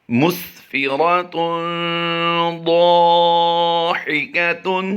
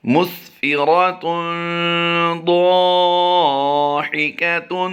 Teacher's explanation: مس میم سین پیش، مس کو ہم لمبا نہیں کر رہے، فا زیر فی کو لمبا نہیں کر رہے، اور را زبر را کی ادائیگی ہم پور کریں گے، اور تا دو پیش تن کی تنوین کے بعد حروف اخفا میں سے ضاد آ گیا، اس لیے اس کو ہم اخفا کر کے یعنی غنہ کر کے پڑھیں گے۔ اس غنہ کو غنہ زمانی کہتے ہیں، اور ضاد الف زبر ضا کو بھی ہم لمبا کر کے پڑھیں گے، یہ الف مدہ کا قاعدہ ہوتا ہے۔